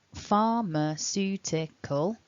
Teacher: the primary stress indicated by the mark at the top so sue is the strong bit far is a little bit strong and the other three syllables need to be weaker in order for you to create that kind of rollercoaster effect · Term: primary and a secondary stress